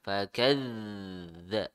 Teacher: zal tasydid ya. Pengucapannya dihentak dan mengalir ya